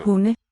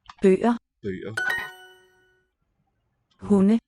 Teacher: we spell it with a D, but the D is dropped from the sound